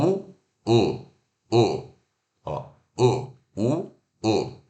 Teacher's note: Esse U ferradura aqui, a gente vai fazer a mesma posição da boca de U longo, U, porém ele está do lado de dentro do gráfico. Então, eu vou relaxar os meus lábios. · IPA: /ʊ/